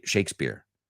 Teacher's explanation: So that P, it's kind of between a P and a B